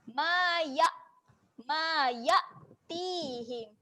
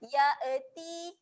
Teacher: Hamzah kat sini dia mati, baris mati. Jadi kita kena matikan bunyi dia di pangkal kerongkong.